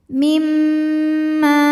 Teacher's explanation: maka mimnya dengung, tahan suaranya sampai ada masuk hidung. Mimma, ma dihukumi dengan mad tabi'i dhahiri.